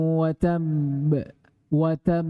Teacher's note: memberikan Jedah antara huruf yang disukun dan pantulannya